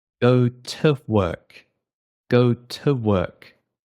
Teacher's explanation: We have a strong T in British accents.